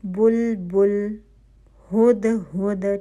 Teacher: آپ اگر اس لفظ کو پڑھیں گے ہد ہد، پورا آپ کے ہونٹ پیش کے لیے گول ہو رہے ہیں. لہنے جلی سے بھی بچنا ہے، یعنی آپ نے دمہ کی آواز کو 1 کاؤنٹ سے زیادہ لمبا نہیں کرنا.